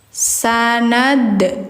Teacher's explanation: dalnya itu ada de-nya. Nah, itu tuh pantulan namanya. Tapi tidak kita buat-buat jadi sanad de enggak ya, tapi emang pure pantulan.